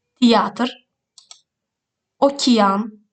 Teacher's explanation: bu hərf birləşmələri iya, io kimi tələffüz olunur.